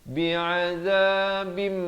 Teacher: Bi'adzabim, di sini terus masuk berserta dengung. Asalnya bi'adzabin, tapi bila datang mim terus masuk berserta dengung. Jadi bi'adzabim 2 harakat. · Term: ikhfa syafawi